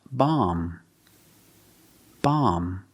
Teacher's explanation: is always silent silent so the word is pronounced bomb bomb end with the m sound because the B is silent